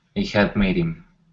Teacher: we want to drop the H and actually say made him.